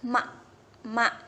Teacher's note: terjadi dua pertemuan antara dua bibir emak-emak nah begitu ya jadi bibir atas dan bibir bawah itu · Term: bunyi bilabial